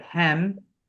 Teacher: So everything is an E instead of a short I. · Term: short E